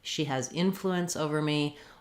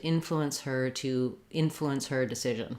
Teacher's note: the in is stressed so it's long and the fluence is shorter and reduced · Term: syllable stress